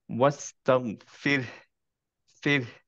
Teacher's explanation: হায়ের বাতাসটা বের হতে হবে, রাইট? এন্ড একটু ধরে রাখতে হবে সো দ্যাট বোঝা যায় এখানে হা আছে।